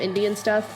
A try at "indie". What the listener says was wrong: when you say indie and stuff, it sounds like you're saying Indian stuff.